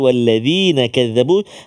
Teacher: huruf dzal, hujung lidah kita keluar sikit. Walladzina kadzabu, hati-hati supaya tak tertukar dengan zai.